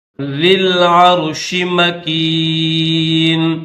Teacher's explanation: زبر ہے، نہ زیر ہے، نہ پیش ہے، نہ جزم ہے، تو اس یا خالی کو نہیں پڑھیں گے، ذال کو لام کے ساتھ ملائیں گے ڈائریکٹ